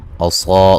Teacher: असा सौत को मोटा अदा करेंगे